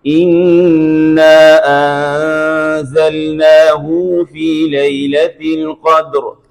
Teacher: ہائے ضمیر میں انہوں نے صلہ کیا